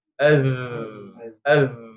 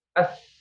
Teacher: dia jahar maka pita suaranya akan bergetar